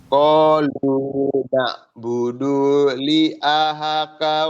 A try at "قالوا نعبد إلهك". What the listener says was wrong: Bunyinya tidak jangan ditahan di tu. Na'budu ilah langsung.